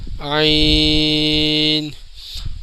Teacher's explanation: عین کی آواز کے آخر میں نون کی آواز نکلے گی